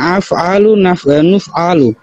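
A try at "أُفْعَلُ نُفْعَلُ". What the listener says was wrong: উফআলু নুফআলু। আফআলু হলে তো মারুফ হয়ে গেল, উফআলু হলে মাজহুর।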